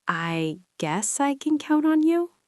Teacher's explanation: If I say I guess I can count on you, with a rising voice, it sounds like I am not sure. >> Yes, a rising intonation indicates a question or doubt.